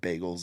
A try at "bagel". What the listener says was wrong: Bagel. You say it like beagle. You say it like bagel.